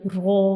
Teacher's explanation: را جو ہے اس کے اوپر کھڑی زبر آ رہی ہے، تو را کو ہم 2 سیکنڈ کے لیے لمبا کریں گے